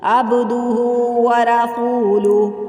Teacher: اشباعی حرکت بھی 3 الف کے برابر لمبی